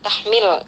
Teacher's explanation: di sini ada lam sukun dibaca jelas ya, lam sukunnya jangan sampai tawalud menjadi tahmil ya.